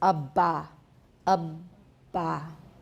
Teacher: make sure that the voicing continues throughout the closure of the a bah and then he says say it slowly and release the closure · start from a fully voiced plosive, say Abba, making sure that the voicing continues throughout the closure. Now say this sequence slowly, making the closure last as long as you can, while while maintaining strong vocal folds vibrations.